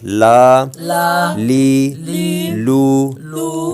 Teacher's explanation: لام یہ حروف تعرفیہ میں سے ہے، زبان کا کنارہ اور دواحق سے ثنایا تک کے مسوڑوں سے ادا ہوتا ہے،